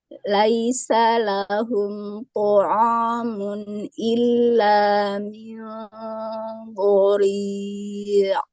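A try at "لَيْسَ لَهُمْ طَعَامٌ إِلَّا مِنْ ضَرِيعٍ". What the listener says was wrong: ainnya tipis saja ya. Jadi bukan to'a, tapi po, to'a, a biasa. jadi jangan sampai ikut jadi agak menebal ya, karena huruf ain kan huruf tipis, maka tipiskan saja.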